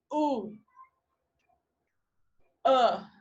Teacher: your tongue is towards the back and it's high oh uh your tongue is towards the back and it's high but lower than ooh which is the high extreme